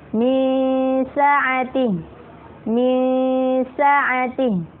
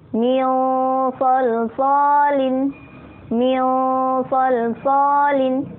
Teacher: Ini sama ya, sin dengan sod, yang membedakan adalah sifatnya. Yang sin itu tipis, yang sod adalah tebal.